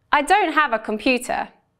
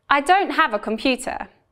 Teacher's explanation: I stress the content words don't have and computer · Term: sentence stress